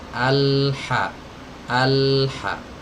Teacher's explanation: huruf yang keluar dari tenggorokan bagian tengah ya dari tenggorokan bagian tengah dari katup hai kecil disini ini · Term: huruf H